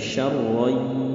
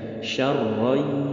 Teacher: Jadi bunyi nunnya hilang dan disertai dengung. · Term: idgham